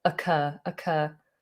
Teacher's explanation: in a sentence it would definitely begin with a schwa